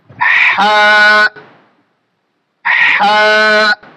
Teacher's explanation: আমরা উচ্চারণের সময় খেয়াল করব এটা হামসের হরফ এবং আমাদের বাতাসটা জারি থাকবে। হা, হা। আমরা বেশি হা করে দেব না, বেশি হা করলে আবার হরফটা আমাদের ফেটে যাবে বা হরফের উচ্চারণটা নষ্ট হয়ে যাবে।